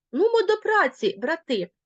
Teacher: звичайно брати як звертання ми виділимо логічним наголосом